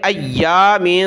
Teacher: میم پر ناک میں آواز پیدا کریں گے